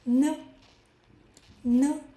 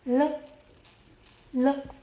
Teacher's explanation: N, air goes through your nose. L goes around the sides of your tongue.